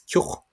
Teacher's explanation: broad TH at the end of a word in East Munster is a ch